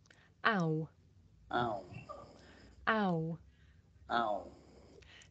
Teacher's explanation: Ow. This is a diphthong, a double vowel sound. The shape the mouth makes changes from the beginning of the sound to the end. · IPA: /aʊ/